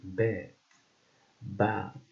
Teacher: B, which is a voiced bilabial and stop sound, like in bed, bat.